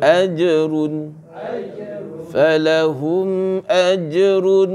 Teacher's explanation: Dia tak boleh dengung lah, mim mati ya, dengan hamzah.